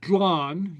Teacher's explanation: without lenited is glan, with a hard G, regular G